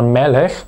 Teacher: hier ist die betonung auf der ersten silbe